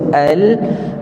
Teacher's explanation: dia tidak tertahan seperti syiddah dan juga tidaklah lancar perjalanannya seperti rakhawah yakni Baina Baina di antara tu ada sedikit ruang untuk suara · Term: bainiah